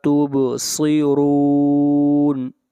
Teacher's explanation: با کے اوپر قلقلہ ہوگا، آواز کو ہلائیں